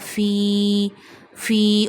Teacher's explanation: Before ya sakina, kasra come at the previous letter, then you stretch ya up to one finger. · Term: ya madda